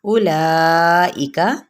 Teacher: حمزہ کی پیش کو لمبا نہیں کرنا، لا پہ 4 حرکت لمبا کرتے ہوئے